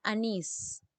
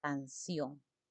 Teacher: tengan la mayor fuerza de voz en la última sílaba y esta última sílaba termine únicamente en n s o vocal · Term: palabras agudas